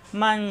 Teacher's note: নুন সাকিনের পরে আসছে জাল অক্ষর অর্থাৎ এটা ইকফা গুন্না অনুস্বরের মত গুন্না হবে